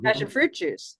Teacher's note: we can take two compounds and put them together but only the first highest note is high the other notes come down